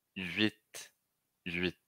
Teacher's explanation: Primeiro eu falo U, depois falo I, e aí o T. Então a língua não muda, né? A língua não muda de lugar.